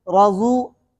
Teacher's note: رضو کے اندر را پر زبر ہے, را موٹی پڑی جائے گی, ضاد وہ پیش زو, رضو.